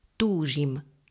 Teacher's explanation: končí na dlhú slabiku ďalšie prípony s dlhou slabikou sa skrátia v slove túžim je dlhá slabika je tam dlhá samohláska u a preto nasledujúca slabika nemôže byť dlhá musíme ju skrátiť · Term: rytmický zákon